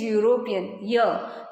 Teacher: The words university, union and European begin with vowel but have consonant sound ya at the beginning.